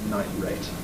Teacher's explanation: nitrate, night plus rate, doesn't, and is likely to have glottalization for the T or even glottal replacement night rate